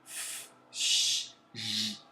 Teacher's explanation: constritivas, isto é, não existe um bloqueio do ar total, é um bloqueio parcial.